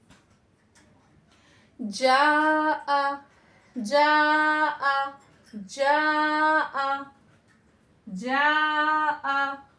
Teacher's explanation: जबान हमारी कहाँ लग रही है, तालु से लग रही है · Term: जीम